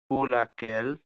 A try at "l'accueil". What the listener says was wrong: না, লাকেল বলে নাই, আবার শুনেন রাইট, লাকই কি বলেছে? লাকই, হ্যাঁ, লাকই। লাকই মানে হচ্ছে, লাকই না, ওখানে এল স্টপ আছে। মেইন ওয়ার্ড হচ্ছে আকই।